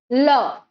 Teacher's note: जिन व्यंजनों के उच्चारण में जीव तालु को भी छुए पर पार्श्व से, मुख के पार्श्व से हवा निकल जाए, उन व्यंजनों को हम क्या कहेंगे, पार्श्विक व्यंजन कहेंगे। · बाकी के दंत या फिर बाकी के हिस्से, मुख के बाकी के हिस्से को हम स्पर्श नहीं करते, सिर्फ तालु को स्पर्श करके जिन अक्षरों का उच्चारण संपादन होता है उसे हम क्या कहेंगे, पार्श्विक व्यंजन। पार्श्व से जो हवा निकल जाए उसे हम क्या कहेंगे, पार्श्विक व्यंजन।